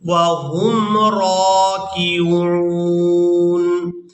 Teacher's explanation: را کو کھڑی زبر کی وجہ سے کھینچ کر ادا کریں گے